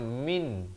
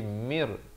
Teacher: Jadi bacanya jangan min tapi mir, terus masuk tanpa dengung. Wa wahabna lahu mir ra bari fathah naik di atas ha pedas ini. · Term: idgham bila gunnah